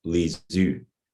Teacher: So for example, at the root level, the historical word from classical Armenian, lezu, meaning tongue or language, comes out as lizu, where the u of the root has assimilated by vowel harmony in backness to the front vowel in the first syllable